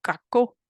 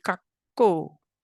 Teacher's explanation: The first word has a short K in the middle